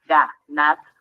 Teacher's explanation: nos damos cuenta que la sílaba tónica se encuentra en la última. Y aunque es aguda, su terminación es en R, lo que la hace una palabra que no lleva tilde o acento ortográfico.